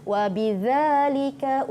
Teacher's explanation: Wa bidzalika umirtu, zalika, bukan za, bukan lidah ke bawah, tapi hujung lidah bertemu dengan hujung gigi kacip, gigi arnab kat depan tu.